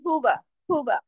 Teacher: ये हा सीने की तरफ जाती है आवाज। एक हरकत पढ़ा जाएगा। हु ज्यादा लंबा नहीं। व ऐसे नहीं